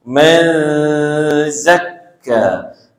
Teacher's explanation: Kena sembunyikan bunyi nun mati. Jangan dibaca penuh ya. Mancam tu. Jangan baca man tu penuh. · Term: ikhfa hakiki